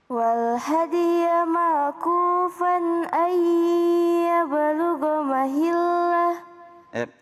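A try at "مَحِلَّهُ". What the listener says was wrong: Makhrajul huruf lam bukan di gigi ya. Ujung lidahnya bertemu dengan gusi. Bukan mahillah, bukan ya. Tapi di gusi ya. Mahillah, saya gambar di sudut ini ya. Nah, ini gigi ceritanya, ini gusi. Nah di sini nih, ini lidahnya di sini.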